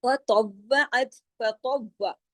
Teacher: अब देखिए फतव्वअत, फतव्व, फ बारीक तो मोटा, तव्व तो मोटा, लेकिन साथ में वाव पे तशदीद है, तो 2 मर्तबा पढ़ा जाएगा सख्ती से